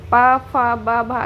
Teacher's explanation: जब आप पा बोलोगे तो देखो आपके होठ आपस में मिल रहे हैं कि नहीं। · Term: ओष्ठ वर्ण